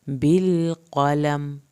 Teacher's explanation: लाम को यहाँ पे हिलाना नहीं है, कौफ को पुर करके पढ़ना है